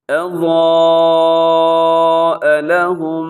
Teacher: اور آگے اضاء لهم، یہاں پر آپ نے کیا کرنا ہے کہ ایک تو حرف ضاد موٹا ہے اور ساتھ الف بھی، وہ بھی موٹا پڑا جائے گا